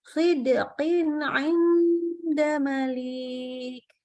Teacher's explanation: dal sukunnya langsung sambung ke huruf qaf suaranya